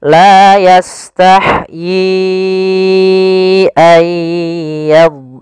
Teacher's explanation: Ya, di sini kita sebab hamzah, yaitu adanya awalnya yi 2 harokat bertemu hamzah, maka menjadi 4 harokat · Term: mad jaiz munfasil